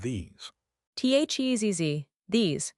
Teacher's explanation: It has a long E sound and a voiced Z pronunciation, THEZZ. The vowel is long and tense.